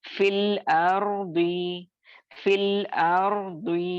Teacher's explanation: میں، تو حذف کے رول کے اکارڈنگ ہم کیا کریں گے، یا مدہ کے ساکن کو ڈراپ کریں گے اور فی کا جو زیر ہے اس کو ڈائریکٹلی ہم لام کے ساکن سے ملا کر پڑھیں گے